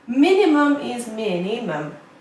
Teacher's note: 3 syllables and the stress is on the first syllable.